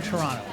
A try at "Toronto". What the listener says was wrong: you don't pronounce the first o in toronto and it's toronto